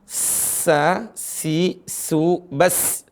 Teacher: Sa, si, su, bas, tipis dan keras. Ya, hamas dan dia safir. Dan dia punya istifal, tipis ya. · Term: huruf sin